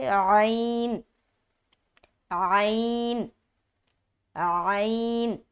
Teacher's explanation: ऐन जो है वस्त हलक से निकलेगा यानी हलक का जो दरमियानी हिस्सा है वहां से ऐन अदा होता है · ऐन का मखरज क्या है हलक है लिहाजा इसको हलक से अदा करेंगे